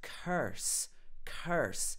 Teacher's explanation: One of the sounds you can hear is the R. In the Irish accent, you get more of an R sound than in a standard received pronunciation. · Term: erotic R sound